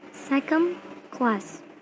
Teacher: the secondary stress is on the first syllable and the primary stress is on the second word